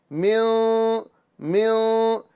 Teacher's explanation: ज़बान ऊपर टच नहीं होगी, उसके करीब रहेगी और हम गुन्ना करेंगे और आवाज़ नाक और मुंह दोनों से निकलेगी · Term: इख्फा